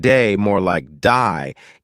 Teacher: Australian accent. They may say words like day more like die, giving words a slight twist.